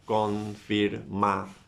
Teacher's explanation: Where is the stress? In ción, right? So confirmación, and you write the stress mark in ción.